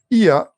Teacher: Nous entendons d'abord le son IE, suivi du son A. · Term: nouvelle diphtongue